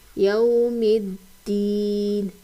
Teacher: واو کے اوپر جزم اور پچھلے حرف پہ زبر آ رہی ہے، تو یہاں پر واو لین ہو رہی ہے، اس کو نرمی اور جلدی سے پڑھیں گے